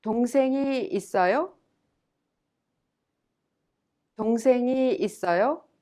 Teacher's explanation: 있어요 is without an interrogative, and thus you have to raise the tone at the end